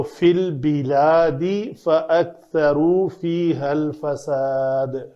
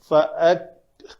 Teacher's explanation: کاف کے اوپر آگے آواز اور سانس دونوں بند کر لی جائے گی